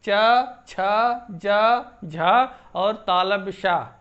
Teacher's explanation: जिह्वा का अग्रभाग अगर तालु में लगता है तब तो कठोर तालव्य होंगे